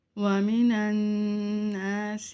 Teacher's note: نون مشدد ہے، یہاں پر ہم غنہ کریں گے